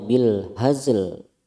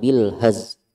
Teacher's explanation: Kalau bil haz salah, bacanya yang benar bil hazl, lamnya harus tetap terdengar meskipun sedikit